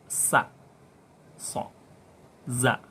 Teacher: ujung lisan dengan antara ujung 2 gigi atas dan bawah